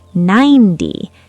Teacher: 19. The 10 number is a dum dah beat.